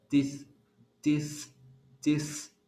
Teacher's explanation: sale el sonido con solo la punta lo mínimo de la lengua que está entremedio los dientes